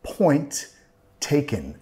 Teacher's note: Point taken. Y nota que no voy a pronunciar las dos T's. Tenemos una T al final de point y después una T con taken. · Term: vinculando